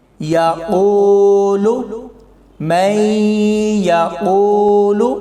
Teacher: اس میں واو ساکن سے پہلے پیش ہے تو اسے ہم لمبا کر کے پڑھیں گے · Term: واو مدہ